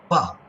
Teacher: pa, this sound does not have additional flow of air